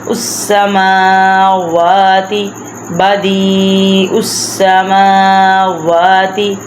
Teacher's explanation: بلہ ما فی السماوات والارض کل لہ قانتون بدیع السماوات اب پہلا حروف جو ہے زیر والا، دوسرا یا ساکن ہے، اس لیے بدیع دی کو ہم لمبا کریں گے۔